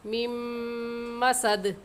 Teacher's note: لام پر غنہ کریں گے کیونکہ تنوین کے بعد حروف یرملون میں سے میم آ گیا ہے اس لیے یہاں پر غنہ ادغام کے ساتھ ہوگا، حبلم۔ میم پر بھی نون ساکن کے بعد میم حروف یرملون میں سے آ گیا ہے تو یہاں پر غنہ ادغام کے ساتھ ہم کریں گے